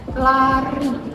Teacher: kayak R-nya itu lebih bergetar di kita. Lari.